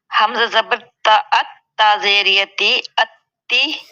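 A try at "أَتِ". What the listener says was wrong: نہیں تا زیر یا نہیں ہے اس میں، ٹھیک ہے. ہم نے حرکت کو نہیں لمبا کرنا اور نہ ہی اس کے آگے حروف مدہ میں سے کوئی حرف ہے. حمزہ زبر تا ات تا زیر تی اتی.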